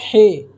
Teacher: इसको हलक से निकाला जाता है, लेकिन उर्दू में हलक से निकालने की ज़रूरत नहीं है। नॉर्मल जिस तरह हम प्रोनाउंस करते हैं हे या ह, उसी तरह बोलेंगे।